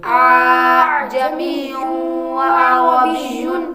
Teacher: ہم نے دو حمزے کو ایک کر کے مطلب دوسرے حمزے کو نرمی کے ساتھ پڑھا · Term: تسہیل